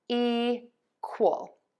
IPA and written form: ˈikwəl (EQUAL)